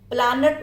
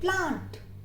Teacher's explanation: ए को आ कर दिया और न को हाफ कर दिया